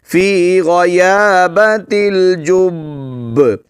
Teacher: پہلے با پر جو ہے شد ہے اس کو پڑھیں گے جماؤں کے ساتھ اور پھر آواز کو تھوڑا سا ہلائیں گے، جنبش دیں گے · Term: قلقلہ